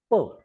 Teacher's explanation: मग मला पचा जर उच्चार करायचा असेल तर upper lip and lower lip comes together tightly and the air comes from the lungs, it comes into the mouth, आणि माउथ मध्ये ते अशी जाम असते, फुल असते, एकदम प्रेशरनी येते. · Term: बायलॅबिल साऊंड